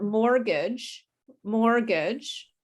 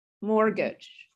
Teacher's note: we don't say the t